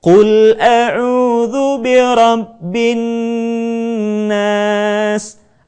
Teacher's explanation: Kita tidak membacanya dengan tergesa-gesa menjadi bin nas, tetapi tahan suara kita. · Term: gunnah